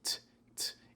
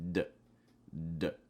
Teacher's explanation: the fast D sound is when you have a T that takes on more of actually a D sound. So instead of t, t, it actually ends up sounding more like d, d. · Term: flap T